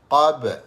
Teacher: Kita panggil qalqalah sughra, pantulan secara kecil, secara sederhana.